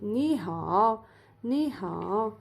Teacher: you have to change it into second tone and then third tone.